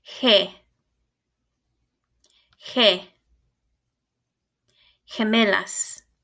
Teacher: the sound in Spanish is similar to an H in English it's a little further back in your throat